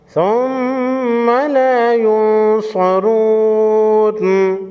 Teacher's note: نون ساکن کے بعد حروف خلقی میں سے کوئی حرف نہیں تو یہاں پر اخفاء حقیقی ہوگا۔